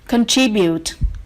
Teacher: we have stress on the second syllable